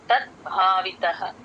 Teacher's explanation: భ కి మహాప్రాణం ఉంది ద కి ప్లేన్ ద